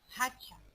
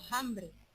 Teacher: pronuncian un sonido aspirado donde el tiempo hubo una F latina